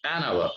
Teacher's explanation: H is not at all pronounced.